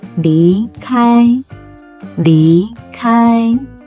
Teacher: Listen closely to how I start with a low pitch and rise, then stay in a high pitch for the first tone. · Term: second tone